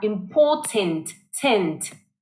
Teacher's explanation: Important would be the British version of the word, and they exaggerate the t sounds. I mean the t sound a lot more.